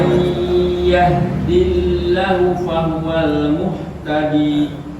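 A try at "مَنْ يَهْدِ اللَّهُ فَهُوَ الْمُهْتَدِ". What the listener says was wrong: Lahnya dipanjangkan.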